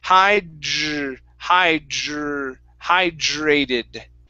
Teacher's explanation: with the d and the r together you want to pronounce a j sound